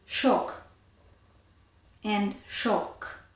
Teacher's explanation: And here in Hungarian they allow doubled consonants. So they're actually just lengthened, but they're, they're phonemic. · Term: geminate consonants